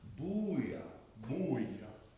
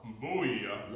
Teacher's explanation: It's an oo vowel. Booyah. Long one, long one. Long one. Booyah.